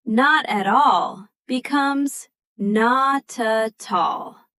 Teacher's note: So the ending consonant basically borrows itself out to the next word. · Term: linking